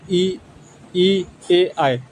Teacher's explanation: जीभ का आगे का भाग काम करता है उसे हम अग्र स्वर कहते हैं